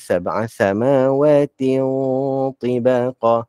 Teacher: tanwin jumpa dengan ta ni, dia dengung. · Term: dengung ikhfa